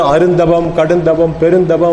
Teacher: அது உரிச்சல் கூட சேர்ந்து வரும்போது அருந்தவம், கடுந்தவம், பெருந்தவம் அப்படி சேர்த்து சொல்லும்போது தான் நம்முடைய தமிழ் இலக்கணப்படி அந்த வல்லின ஒலி வந்து காற்றேற்றப்பட்ட ஒரு மெல்லிய ஒலியாக மாறும்